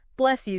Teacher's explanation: s plus y often sound like sh